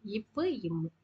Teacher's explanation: இரு மெய்கள் மேலிதலும் கீழிதலும் பொருந்ததால் பிறப்பது